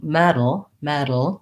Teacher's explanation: i lift up to that td position i have my voice on but it's a light touch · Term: flap t